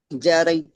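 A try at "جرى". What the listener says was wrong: जरा, जरा, या नहीं है ये या नहीं है, जरा है।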